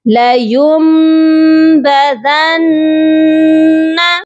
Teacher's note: نون کی آواز کو میم سے چینج کریں گے